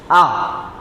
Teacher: फिर आता है हमारा विवृत, जिसमें हमारा मुंह पूरा खुलेगा। आ में हमारा पूरा मुंह, आप प्रैक्टिकल करके देख सकते हैं घर पे।